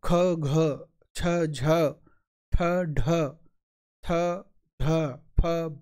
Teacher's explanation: देखो अंदर से हवा निकल रही है ना, ज्यादा दम लगानी पड़ रही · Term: महाप्राण